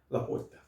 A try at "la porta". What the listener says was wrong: You still have the R a little.